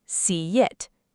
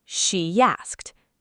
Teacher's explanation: push that invisible Y sound into the gap